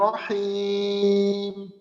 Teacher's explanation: আচ্ছা, এই যে শেষে দেখেন, শেষে রহিম, এখানে যদি আমরা 3 আলিফ পরিমাণ টানি, তো আমাদের যে 3 আলিফ পরিমাণ টানটা থাকবে পুরা টানটাই কিন্তু মুখ খোলা রেখে 3 আলিফ টান শেষ হবে, এবং এই 3 আলিফ টানের ভিতরে আওয়াজ নাকে নেওয়ার কোনো সুযোগ নেই। মনে করেন 3 আলিফ শেষ হইলো, তারপর হিম ম, হিম, মিমটাকে একটু সময় গুন্না আকারে চালু রাখবো।